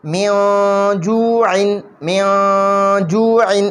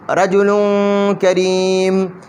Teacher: دې تنوین کې به اوس مونږ اخفا کوو غنه به پکې کوو پوزې ته به پکې آواز خیجو